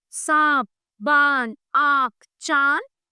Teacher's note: अनुनासिक वाले वर्णों के उच्चारण में हवा नाक और मुंह दोनों से बाहर निकलती है